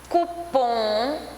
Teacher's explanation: a palavra cupom é oxítona porque o pum é a última sílaba mais forte